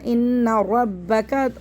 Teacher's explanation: ان رب کا پڑھنا ہے، اس کو قا نہیں پڑھنا. ان ربک، را کو موٹا پڑھنا ہے، کاف کو باریک پڑھنا ہے